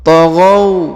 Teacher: huruf gha yang ini diayun sekali karena di depannya terdapat waw sukun. Taghaw, alif yang ini tidak dibaca ya, yang ini tidak dibaca.